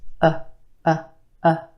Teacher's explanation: It's very neutral. It's a lazy sound. There's no tension in your jaw, lips, or tongue as you make this sound. You're just opening your mouth a bit and vocalizing. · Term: schwa